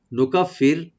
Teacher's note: নুকাফির ফি বলবো, আর রাটাকে একটু আমরা এখানে পাতলা করে পড়বো, এখানে হালকা করে লাইট করে।